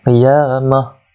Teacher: Ta marbutah di situ bila kita waqafkan dia bunyi seperti ha